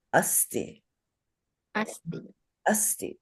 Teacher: that is a dental S, so it's a plain sa. Don't say sha.